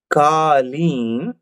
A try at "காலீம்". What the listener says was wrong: அந்த இடத்துல இந்த நெடில்